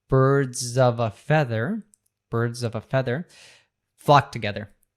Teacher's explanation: but we have the V from of that is linking to that so we have birds of a feather birds of a feather · feather flock together so here we have a couple schw sounds when we have of it often becomes a simple uh and we have the article a as we mentioned before that · we have the article a, as we mentioned before, that often becomes a schwa sound